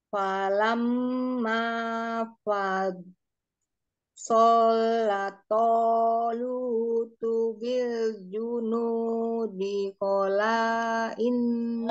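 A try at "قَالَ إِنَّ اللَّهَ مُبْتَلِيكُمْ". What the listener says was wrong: Kola inna kola dua harokat, perhatikan panjang pendeknya. Kola inna allaha.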